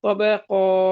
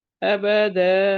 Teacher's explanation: Number 3 پر ہے 2 زبر کی تنوین، 2 زبر والی تنوین یعنی فتحتین. جب اس پہ ہم وقف کرتے ہیں تو اس زبر والی تنوین کو الف میں بدلا جاتا ہے، یہ الف میں بدل جائے گی.